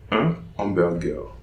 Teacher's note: No liaison between un and hamburger. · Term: H aspiré